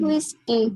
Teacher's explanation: Whis को लंबा खींचेंगे because it's the first syllable and की को छोटा रखेंगे